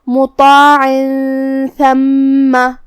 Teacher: حرف ثا کو ہم زبان کی سر اور اوپر والے دانتوں کے اندرونی کناروں سے ادا کریں گے جو کہ اس پہ زبر ہے، تو ہمیں ثا کو زبر سے ادا کرنا ہے اور اسے ظاہر کرنا ہے.